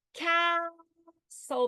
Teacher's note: so the pitch is on /ca/: CAstle